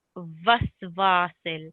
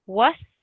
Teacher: Often it's mispronounced or wrongly said as a v, like vasvasil. So it's like a letter W, wa, as you rightly said, was.